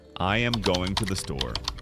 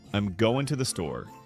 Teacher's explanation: Some words are reduced and the stress is on going and store.